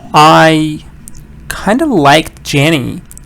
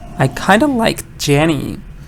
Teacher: when they get to the throwaway word or the filler word, whatever they call it, they say it faster and quietly. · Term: weak pronunciation